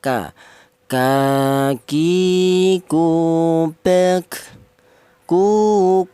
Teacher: Untuk huruf kaf keluarnya huruf berasal dari pangkal lidah ya.